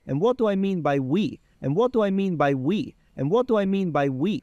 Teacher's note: Yeah, tongue is closer to the teeth. And so we can hear this dental unaspirated T sneaking in because of the glottal stop coming